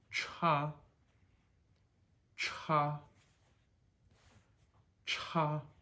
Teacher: CH is said just the same way it is in English, just with a little more force over the top.